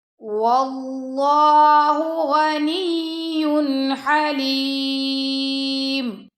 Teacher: واللہ اللہ کی لام سے پہلے زبر آ گیا تو اللہ کی لام موٹی پڑی جائے گی